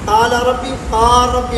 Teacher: قال ربی دیکھو لام نہیں پڑھا گیا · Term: ادغام